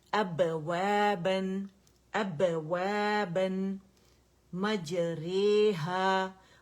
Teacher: قلقلہ جنبش, جو جہاں جب یہ ادا ہوتے ہیں لیٹرز اپنے مخرج سے, تو جب ہونٹ جدا ہوں گے, ٹھیک ہے, جنبش پیدا ہوگی, قلقلہ پیدا ہوگا